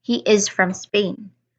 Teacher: This uses a falling intonation. Why? Because it's just a statement.